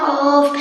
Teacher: 4 নম্বর মাখরাজ জিহ্বার গুড়া তাল বরাবর উপরের তালের সঙ্গে লাগিয়া